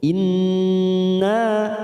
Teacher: In nun yang bertasdid bacaan gunnah musaddadah, kita tekan 3 ketuk. Inna nanya fathah diikuti alif 2 harokat kita panjangkan